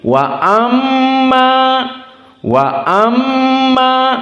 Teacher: maka mimnya wujubil gunnah karena dalam keadaan musyaddadah dan ada mad tabi'i.